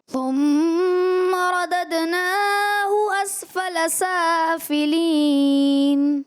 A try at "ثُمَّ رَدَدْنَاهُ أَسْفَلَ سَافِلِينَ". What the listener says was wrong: تھوڑا مد اصلی کی لمبا ادائیگی تھوڑا سے ایکسٹرا کرتے ہیں.